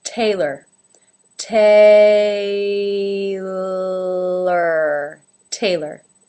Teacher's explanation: the second syllable ler ler again without a real pure vowel sound in there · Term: A as in say